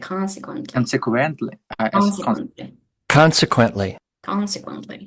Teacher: the first syllable is stressed